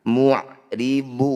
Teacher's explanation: Mad tabi'i atau mad asli sama saja, ketika bertemu huruf hidup dan dihentikan disebut bacaan mad arid disukun. Cara bacanya du, ini panjangkan 6 harokat. Kemudian huruf yang terakhir sukunkan.